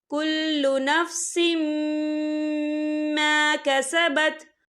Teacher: یہ دیکھیں کل نفس سین کے نیچے تنوین ہے، تنوین کے بعد جو ہے میم آ رہا ہے اور میم جو ہے حروف یرملون میں سے ہے تو یہاں پر ادغام ہوگا اور ہم اسے غنّے کے ساتھ پڑھیں گے